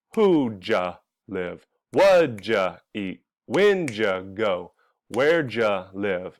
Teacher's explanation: our base form verb is the most important word in the question, so it gets the stress. And before the base form verb, there's two sounds.